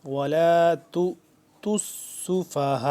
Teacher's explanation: ہا الف مد زبر ہا 4 سے 5 الف کے برابر، یہ لمبی ہو جائے گی